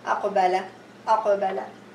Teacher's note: It's a qalqalah sughra or low. I don't have to make it too hard.